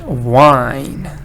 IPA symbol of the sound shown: aɪ